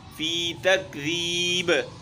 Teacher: ذال باریک ہے، با میں قلقلہ ہے